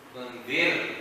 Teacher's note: Tunzir. Remember the ra is light because there is a kasra before it.